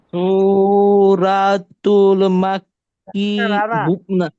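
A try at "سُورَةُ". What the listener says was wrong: রা না, রা না, র র র। সু র র র জবর।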